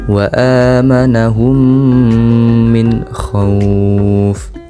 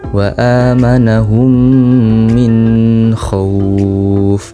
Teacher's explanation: Bacaan ini mengandung hukum bacaan izhar halki karena terdapat nun mati bertemu huruf kha dan harus dibaca jelas.